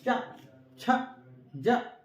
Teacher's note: तालू मतलब जो जीभ के ऊपर वाला पार्ट होता है, जैसे बोलिए चा, देखिए आपका ये जो आपकी जो जीभ है वो तालू मतलब ऊपर वाले पार्ट से मिलेगी